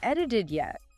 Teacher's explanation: edited it yet with all those quick flap sounds is actually quite tricky to say smoothly